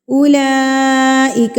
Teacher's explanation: اگر آپ کو بڑی مد کے فوری بعد یہ والی حمزہ دکھ جائے تو اس کا مطلب ہے یہ بڑی مد ہے، مد متصل ہے، اس کو آپ نے 4 حرکات کے برابر کھینچ کے پڑھنا ہے